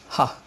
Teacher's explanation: रा और हा में खास बात यह है, रा हमारा प्रकंपित व्यंजन है, जिसमें जीभ 3 बार कांपती है, रा, और हा में गले के तंत्र 3 बार कांपते हैं